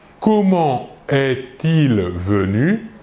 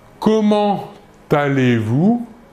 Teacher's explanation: nous réaliserons la liaison entre comment et aller